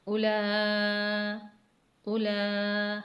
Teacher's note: حمزہ واو پیش او، لام کھڑا مد زبر لا، اولا، لام پر کھڑی زبر ہے اور مد بھی ہے، جسے ہم 5 حرکت کے برابر کھینچ کر پڑھیں گے۔